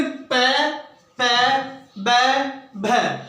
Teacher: जब इनका उच्चारण किया जाता है तो नीचे वाले ओष्ठ और ऊपर वाले होठ और स्वतः ही अपने आप चिपक जाते हैं